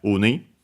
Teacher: uni accent on the first syllable